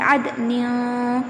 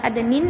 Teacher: دیکھیں، عدن تجری، یہاں پہ دیکھیں نون ساکن کے بعد تا ہے، یہاں پر پڑھیں گے عدن، اخفاء نون کی آواز عدنین نہیں کہنا بلکہ عدن، اور غنہ بھی کرنا ہے، یعنی نون کی آواز ہماری ناک میں گھومے گی